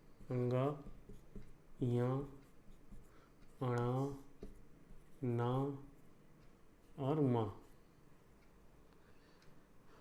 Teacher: उच्चारण स्थान क्या हो गया इनका, नासिका, यानी कि नाक से इनका उच्चारण होता है, तो ये नासिक वर्ण हो गए। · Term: अनुनासिक वर्ण